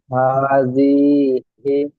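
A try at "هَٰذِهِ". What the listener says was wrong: জিটা টান হয়ে যাচ্ছে,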